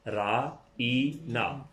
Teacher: نون کے ساتھ الف ہے تو یہ الف معروف کی پوری آواز ہو گئی الف لگنے کی وجہ سے. را ای نا. جب آپ اس کو الگ الگ لکھیں گے تو پہلی آواز جو ہے را اور الف جمع آئین کے نیچے زیر جمع نون الف نا، را ای نا.